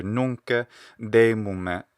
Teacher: they add a little vowel sound something like a schwa normally or an e after a lot of final consonants so i hear nunca de mumma here instead of in fact